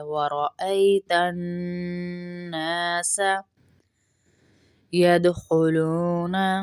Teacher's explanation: نون کے غنہ کریں گے نون میں اور ایک الف کے برابر کھینچے بھی گے کیونکہ آگے الف مد ہے، وَرَأَيْتَ النَّاسَ يَدْخُلُونَ، يَدْخُلُونَ، يَدْخُلُونَ، دال